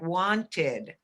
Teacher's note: sometimes when there's a consonant ahead of ed it makes a id sound like wanted